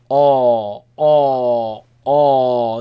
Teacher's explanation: the heavy sound not the a but oh in the back of the mouth